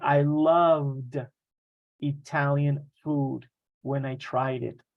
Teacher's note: It finishes with a v sound. There's vibration.